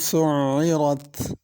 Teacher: سُعِّرَت عین ہے اور اس کے اوپر شد ہے، تو اس کو صحیح طریقے سے ادا کرنا ہے، عین حمزہ نہ بن جائے اور سُعِّرت نہ پڑھا جائے بلکہ شد کے ساتھ سُعِّرت۔